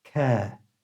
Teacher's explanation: Notice I don't pronounce the letter R in the word care.